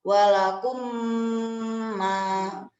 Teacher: Nah, idgham syafawi atau biasa disebut dengan idgham mimi yaitu memasukkan atau menggabungkan mim sakinah kepada mim berbaris beserta dengan dengung 2 harokat. Contohnya yaitu apabila ada salah satu huruf mim itu bertemu dengan huruf mim lagi.